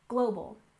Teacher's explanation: stress on the first syllable in global